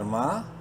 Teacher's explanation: ایک الف کے برابر لمبا کریں گے میم کو